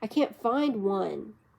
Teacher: Falling rising tone on one.